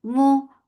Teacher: Mu, for the circle lips, the sound is short.